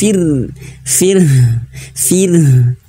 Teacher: huruf ro itu dia memiliki sifat takrir takrir itu yaitu getaran dan getaran huruf huruf ro itu adalah aib bagi dia aib